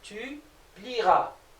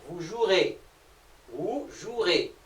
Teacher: Par contre, il y a quelque chose à retenir, c'est que pour les verbes du premier groupe, dont la terminaison est à l'infinitif est IER, OUER et UER, il ne faut pas oublier que le E ne doit pas s'entendre dans la conjugaison.